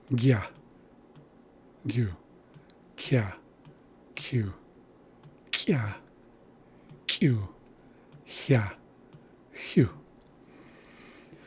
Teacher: So those are the palatal velar sounds of the xa'isla language.